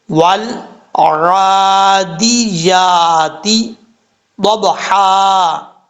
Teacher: ضاد حروف مستعلیٰ میں سے ہے، پر پڑھا جائے گا۔ ضاد کے بعد جو با ہے، با حروف قلقلہ میں سے ہے، اس میں قلقلہ ہوگا پڑھتے ہوئے کیونکہ ساکن ہے۔